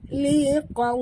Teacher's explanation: huruf qaf tebal, waw sifatnya lin